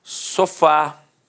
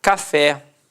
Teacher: repare que a sílaba tônica é a última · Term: oxítona